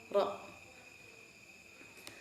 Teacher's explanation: Terus geser lagi untuk ro di dalamnya, ro itu tidak boleh ada getaran banyak